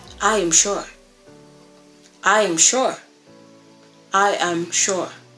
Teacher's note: then we have the falling intonation. It's used for statements, commands, or to show finality.